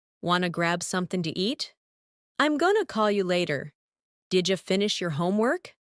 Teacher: want to becomes wanna, going to becomes gonna, and did you becomes didja.